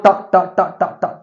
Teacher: कहां से बोलता है मूर्धा से टच होता है